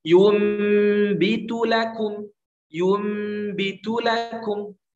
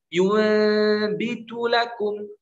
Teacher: Yumbitu, rapat. Dua bibir itu rapat, itbaq.